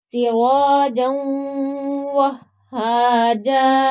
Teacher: وقف میں یہاں دو زبر کی تنوین ہے تو اس کے بعد الف ہے تو ایک زبر پڑی جائے گی